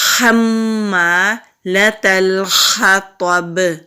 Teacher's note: میم کے اوپر تشدید ہے تو یہاں پر غنہ ہوگا ، الف مدہ بھی ہے، ایک الف کے برابر کھینچتے ہوئے،